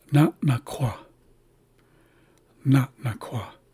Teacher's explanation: you don't really hear the pause in front of this first glottalized n because we're starting the word on a pause. Every word starts with starts from nothing.